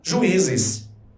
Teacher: o I, ele deixou de ser uma semivogal, ganhou acento tônico, passou a ser vogal. Ninguém diz juízes.